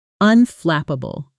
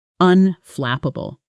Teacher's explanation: The stress is on the second syllable. Flip. And that flap sound should be crisp and clear.